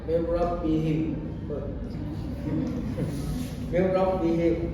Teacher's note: nun sukun atau tanwin dilebur ke huruf berikutnya tanpa suara dengung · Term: idgham bila gunnah